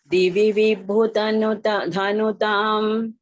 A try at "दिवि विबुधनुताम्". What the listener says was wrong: தனுதாம்னு பிரிக்க கூடாது. திவி விபுத நுதாம் அப்படி பிரிக்க.